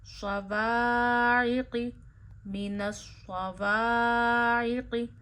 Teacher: क़ाफ हरूफ मुस्तालिया में से है, मोटा अदा करिए